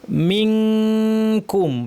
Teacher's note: জিহ্বাটাকে কাফের মাখরাজে লাগিয়ে ফেলতে হবে এবং তারপর নাক থেকে আমাদেরকে গুন্না করতে হবে